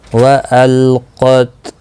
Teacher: واو زبر و حمزہ لام زبر ال و ال قاف تا زبر قط و القط. قاف مستعلیہ ہے، پر پڑھا جائے گا